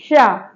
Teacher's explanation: ये जो सा है हमारी, ये मूर्धन्य सा है। इस सा को आप जब बोलेंगे तो जो आपकी जिह्वा है उसका अग्रभाग यानी कि अगला भाग ऊपर की तरफ थोड़ा सा मुड़ेगा।